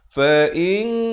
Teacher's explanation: jadi bunyinya samar saja. Nak kata nun pun tidak, nak kata kaf pun tidak. Bunyinya samar-samar di antara kedua-duanya itu dengan dua harakat. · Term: ikhfa hakiki